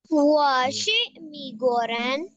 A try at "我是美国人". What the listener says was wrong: मी नहीं मई, 美国人।